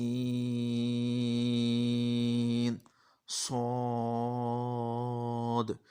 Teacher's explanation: सौद की सीटी आपने थोड़ी सी मोटी करनी है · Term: सीटी वाले हरूफ